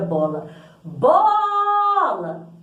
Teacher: então por exemplo a palavra bola bola o ó é mais forte · na sílaba bola, o Bo é mais forte, logo o O é uma sílaba tônica.